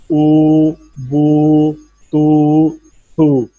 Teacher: ओ ये होंठों से निकलती है, होंठों को गोल करें, दरमियान खुला रहे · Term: वाओ